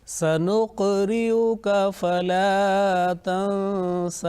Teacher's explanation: in these examples the qalqalah letter has been pronounced softly. There was not much jerking sound, but because they say in continuation.